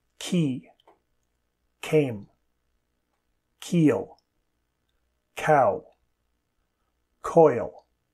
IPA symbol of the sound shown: k